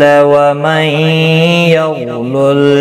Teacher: نون ساکن کے بعد پھر یرملون کا یا ادغام مع الغنہ ہوگا. غین ساکن کو ہلانا نہیں، پر بھی پڑھنا ہے.